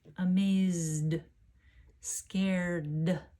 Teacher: Because my voice is on at the end of the verbs, it stays on for the D sound